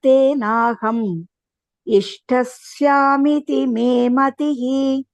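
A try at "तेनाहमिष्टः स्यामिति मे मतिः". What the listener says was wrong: Only the last pronunciation, when at the end of the line, when there is a hrasva, make sure you don't elongate it.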